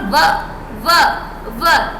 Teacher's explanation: हमारे जो दांत हैं वो नीचे वाले होठों से टच हो रहे हैं। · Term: दंतोष्ठ